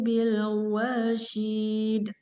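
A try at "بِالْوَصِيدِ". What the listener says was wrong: Dia makhrajnya sama dengan sin. Itu shin. Ini sod. Kayak kita mengucapkan huruf sin. Cuman dia ini agak tebal. Kolkolahnya wasid.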